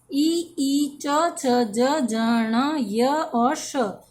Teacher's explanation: ये सभी तालु से बोले जाते हैं, अतः इन्हें तालव्य वर्ण कहते हैं